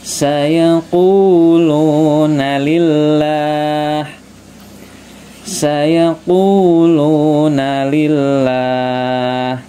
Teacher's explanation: Ku-nya panjang, lu-nya juga panjang, matobi panjang, 2 harokat atau 2 ketukan ya